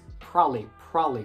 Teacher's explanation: So the syllable ba in the middle is completely silent. It becomes probably, probably.